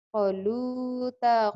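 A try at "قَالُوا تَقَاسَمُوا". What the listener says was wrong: Bukan, konya panjang. Qalu taqasamu.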